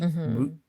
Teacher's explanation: It's sort of silent. It's a stop T.